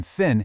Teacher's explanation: The sound you hear in thin is made by putting your tongue between your teeth and just blowing air. Totally voiceless.